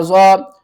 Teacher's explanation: ضاد کو جب آپ نے پڑھنا ہے تو لاسٹ میں دال کی آواز آئے گی